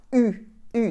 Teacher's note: So the U sound is more forward in your mouth.